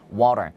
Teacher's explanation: 살짝 혀끝으로 이 태핑이라고 하죠. 살짝 이렇게 건드려주는 거예요. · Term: 플랩 사운드